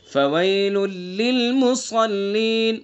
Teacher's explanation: فویل لل، اس کے اندر ادغام تام ہوگا